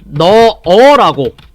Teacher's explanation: 이런 게 리을 탈락이고, 히읗 탈락. 히읗이 없어지는 거예요. 너타에 어미 어를 넣으면 너허가 아니고 너어라고 발음을 한다는 거죠.